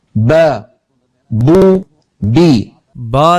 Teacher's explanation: दोनों होठों से अदा होती है इस तरह के दोनों होंठ आपस में मिलते हैं · اب، با، بو، بی۔ با دونوں ہونٹوں سے ادا ہوتی ہے، اس طرح کہ دونوں ہونٹ آپس میں ملتے ہیں۔ زبان کو دیکھیں، جب با ادا ہوتی ہے تو زبان بالکل سکون میں ہوتی ہے۔ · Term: با کا مخرج